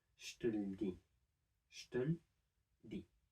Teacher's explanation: the l sound without the e after it comes attached to the syllable before. So in total we have two syllables instead of the four with all of the e there.